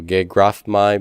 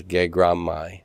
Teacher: the phi says, I'll stop blowing air. And I become a labial that is just like the labial that comes after it. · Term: full assimilation